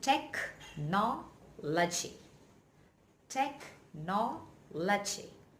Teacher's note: Well, the stress is on no.